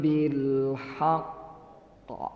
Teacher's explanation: Tapi dia karena tasydid di akhir, maka qalqalahnya harus lebih besar. Maka disebutnya qalqalah akbar.